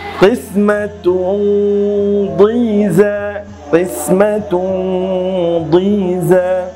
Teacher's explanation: এখানে দেখুন তানবিন এসেছে এবং তানবিনের পরে দাদ, এটা হচ্ছে মোটা হরফ। এই জন্য আপনাকে গুন্নাহটাকেও সেভাবে মোটা করে পড়তে হবে।